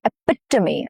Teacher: Here the stress falls on the second syllable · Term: the stress syllable